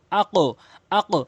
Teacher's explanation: এ কফটি উপরের দিকে সাউন্ড হবে তাই উপরের দিকে সাউন্ড করে উচ্চারণ করছি